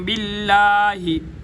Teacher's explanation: لفظ اللہ کا لام باریک ہوگا